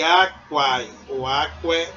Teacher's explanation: quando há o ditongo, pode ser a vogal E, né, que vem sofrendo uma monotonguização por conta desse ditongo